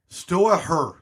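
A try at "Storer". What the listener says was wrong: it's store H is silent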